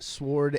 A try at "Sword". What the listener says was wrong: Did you say sword? Sword. The W is silent.